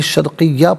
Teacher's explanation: دو زبر کی تنوین وقف میں الف سے چینج ہو جاتی ہے